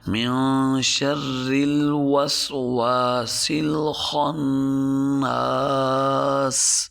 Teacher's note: نون کو کھینچیں گے بھی صحیح، اس کے اوپر غنہ بھی کریں گے۔